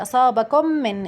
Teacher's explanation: أدغمنا الميم الساكنة عند الميم المتحركة لأن الميم المتحركة من حروف الإدغام الشفوي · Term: إدغام شفوي